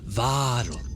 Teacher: really extend that A sound a little bit more, and then put that heavy emphasis, that stress on the first syllable, not on the second one. Really let that drop into the liquid that is the L.